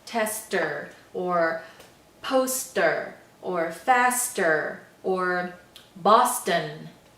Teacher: those all have ST sounds in the middle, but they sound just like an initial ST sound.